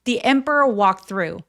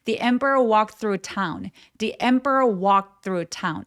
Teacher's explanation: 근데 지금 자음이 엄청나게 많이 뭉쳐 있죠. 이런 경우에 중간에 낀 t를 발음을 아예 안 해버리는 습관이 있어요. 그래서 빨리 발음하게 되면 The emperor walked through 하면서 동사 원형처럼 그냥 발음하셔도 괜찮습니다.